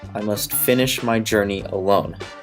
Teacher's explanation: anapestic, that is two unstressed syllables followed by a stressed one